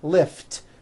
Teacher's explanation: Lift ends with an unvoiced T.